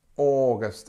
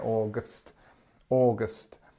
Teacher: it has this long or sound at the beginning which is stressed and it's long